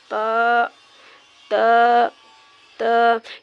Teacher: यानी जो जीभ की नोक है यानी वो ऊपर के दांत के जो बड़े दांत है ऊपर के उसके किनारों पे लगेगी।